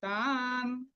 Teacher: তান নটা অর্ধেক, আমরা কিন্তু তা ন বলবো না